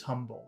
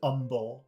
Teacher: he doesn't pronounce the H in humble